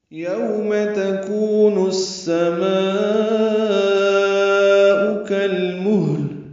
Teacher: یوم واو لین ہے، ہونٹوں کو گول کریں گے، آگے لائیں گے